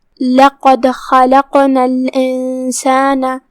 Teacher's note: قاف ہے اور اس پہ جزم ہے، لہذا اس کا دھیان رہے اسے ہلاتے ہوئے یہ کلمہ پڑھنا ہے